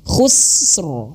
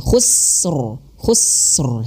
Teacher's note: Sinnya mengeluarkan angin karena dia memiliki sifat hams.